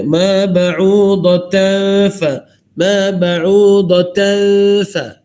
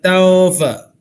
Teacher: kita masukkan bunyi bunyi ikhfa haqiqi atau nun mati itu ke dalam huruf fa.